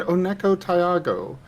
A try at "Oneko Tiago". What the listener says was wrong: No, there's a little bit too much emphasis on the pause between Ty and Ugo, but mostly we're fine.